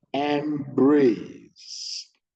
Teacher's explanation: EM stressed, brace low pitch